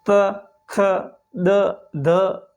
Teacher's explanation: जब हम ये वर्ण बोलते हैं तो हमारी जीभ सीधी दांतों को टच करती है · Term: दंतीय वर्ण